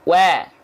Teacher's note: Bunyinya jangan condong ke e, tapi ke a.